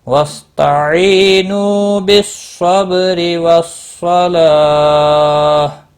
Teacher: یا مدہ ہے، نو واو مدہ ہے، ایک ایک الف کے برابر کھینچ کر پڑھنا ہے